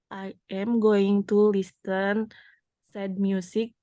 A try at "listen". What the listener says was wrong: Nih ya, listen, tulisannya kan listen, tapi bacanya T-nya apa? Nggak kedengeran, dihapus jadi listen. Listen.